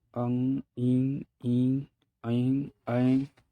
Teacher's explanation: अनुनासिक स्वर जब जो है ध्वनि मुख के साथ साथ जो है नाक से भी निकलती है